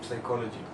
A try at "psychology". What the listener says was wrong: psychology, you don't pronounce the P.